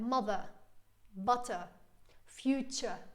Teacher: in British English the ER and ending at like the ER ending is a schwa sound